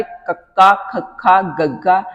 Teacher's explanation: ਜਿੱਥੇ ਜੀਭ ਦਾ ਪਿਛਲਾ ਪਾਸਾ ਕੋਮਲ ਤਾਲੂ ਨਾਲ ਜੁੜ ਕੇ ਹਵਾ ਨੂੰ ਰੋਕਦਾ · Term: ਕੰਠੀ ਧੁਨੀਆਂ